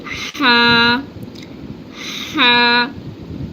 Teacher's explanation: This is a spicy letter just uh pronounced from the central part of the throat and uh like a pushing your back like oh sorry out like ha ha and the next one is [Music] uh this is a letter comes from the top of the throat and pronounced from here. · just pronounced from the central part of the throat and like pushing air back, like out, like ha, ha.